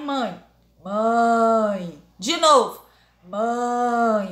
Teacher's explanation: quer dizer que o som vai sair pelo nariz